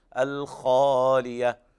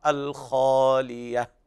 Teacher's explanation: وهنا حرف الخاء وقع بعده ألف وهذا من أعلى مراتب التفخيم، الخالية، وليس هناك ضم للشفتين